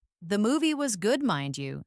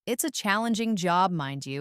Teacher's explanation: It's often spoken with a slight pause before it.